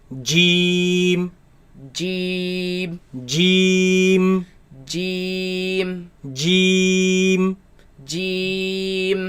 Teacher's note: This letter comes from the middle of the tongue against the middle of the upper palate. Middle of the upper palate.